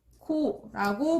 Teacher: 히읗과 기역이 만나서 뭐로 줄어들었나요? 네, 키읔으로 줄어들었죠. 그래서 이런 걸 자음 축약이라고 하니까요.